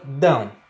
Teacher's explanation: Existe a pronúncia aí desse ditongo tanto pela boca quanto pelo nariz, pelas fossas nasais. Então nós temos um ditongo decrescente nasal. · A vogal, tá? Está indo da vogal para a semivogal, do maior para o menor.